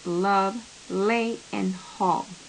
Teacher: tongue the air spills over the sides of the tongue laterally the point of closure for the sound l is the alveolar ridge · instead of the air stream escaping over the tip of the tongue the air spills over the sides of the tongue laterally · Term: alveolar lateral approximant